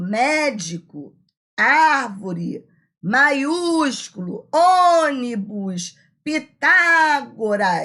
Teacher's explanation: São as palavras cuja sílaba tônica é a antepenúltima sílaba. Todas são acentuadas. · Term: proparoxítona, proparoxítonas